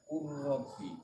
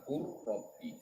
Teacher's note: Jadi lamnya diidghamkan ke huruf ro. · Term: idgham jinsi